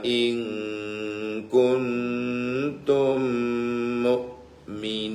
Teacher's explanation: nun mati ketemu Kaf ikhfa bacaan samar · mim pertama masuk ke mim kedua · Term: idgham mitlain